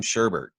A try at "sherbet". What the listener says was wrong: So you pronounce that sherbet. There's no R before the last T.